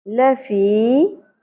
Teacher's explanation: ل زبر کو شارٹ پڑھنا ہے، زیادہ نہیں کھینچنا